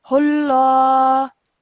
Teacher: And then over here, remember that this would be a majestic lam, thick lam, because the letter before has a dhamma